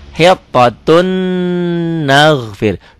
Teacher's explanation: Tulisannya hittotun ada n-nya, n-nya masuk ke n berikutnya. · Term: idgham bigunnah